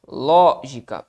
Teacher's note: Lógica é uma palavra proparoxítona. Lógica, perfeito. Portanto, acentuada na antepenúltima sílaba.